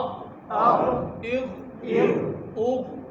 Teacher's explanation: غین اور خا گلے کے شروع والے حصے سے